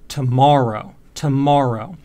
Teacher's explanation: the ma is a little bit longer than the other bits of the word right tomorrow tomorrow and again it's louder as well and it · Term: stress accent